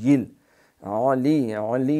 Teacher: علی عین جو ہے اس کو حمزہ نہیں پڑھنا